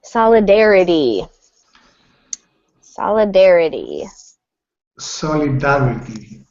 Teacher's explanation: So, we stress dare and the t at the end sounds like a d.